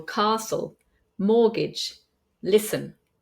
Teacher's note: we have words with a t in the Middle where the t is not pronounced